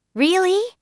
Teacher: with a rising tone, they are surprised